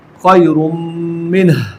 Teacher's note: تنوین کی آواز کو میم کے ساتھ ملا دیا گیا اور دونوں کو مشدد ادا کیا جا رہا ہے، تو یہ ادغام ہے اور ساتھ ساتھ غنہ بھی ہے۔